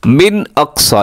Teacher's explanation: वजाअ मिन अक़सल मदीनति रजुलुन यस्आ, मिन अक़सा, यहाँ पे इजहार हलकी है, नून साकिन के बाद हमज़ा आ रहा है तो अपने गुन्ना नहीं करना, आवाज़ को नाक में नहीं लेके जानी